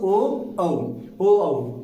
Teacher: ओ और औ। इनका उच्चारण स्थान क्या होगा दोस्तों? इनका उच्चारण स्थान होगा कंठोष्ठ।